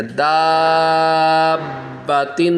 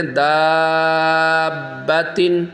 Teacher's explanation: تھوڑا جماؤ کے ساتھ بھی، سختی کے ساتھ بھی پڑھیں گے کیونکہ با جو ہے حروف قلقلہ میں آ رہا ہے اور با مشدد ہے، اس کے اوپر 3 داندوں والی شکل ہے، تشدید، شد بھی اس کو کہا جاتا ہے۔